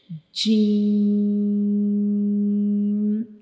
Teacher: जब हम जीम को रीड करते हैं तो हम इसको थ्री सेकंड्स के लिए लंबा करेंगे। जैसे कि जी और हम इसे थोड़ा सख्ती से पढ़ते हैं।